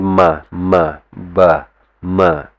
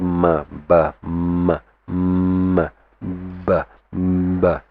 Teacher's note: You say ma, ba, ma, and you can feel your lips, right, coming together.